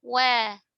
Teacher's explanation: waw ketika fathah itu tipisnya disempurnakan ya dengan menariknya. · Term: huruf waw